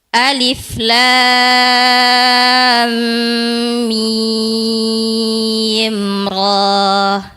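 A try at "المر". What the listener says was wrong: Iya, ronya dua harakat dikurangin lagi.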